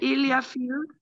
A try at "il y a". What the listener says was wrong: Now we are not going to say il y a fee. Just il y a fee is not complete.